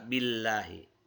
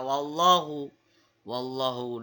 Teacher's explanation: kalau lam jalala tarqiq itu maka dibaca lafaz Allahnya itu dibaca dengan tipis berbeda dengan kata wallahu wallahu di sini dibaca dengan tebal